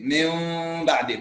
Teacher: Jadi mim, tapi tidak mengatup keseluruhan. Dua bibir itu ada terbuka dikit. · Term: ikhfa syafawi